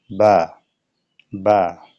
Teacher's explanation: বার মাখরাজ হলো দুই ঠোঁটের যে ভিজা অংশ রয়েছে এই ভিজা অংশ থেকে। যেমন বা, দুই ঠোঁটের ভিজা অংশ একসঙ্গে লাগিয়ে একটি হরফ উচ্চারিত হয়, সেটি হলো বা, বা।